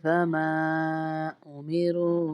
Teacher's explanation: वमा को हम इसलिए खींच रहे हैं, ऊपर छोटा मद है, इसको 3 उंगली के बराबर खींच के पढ़ते हैं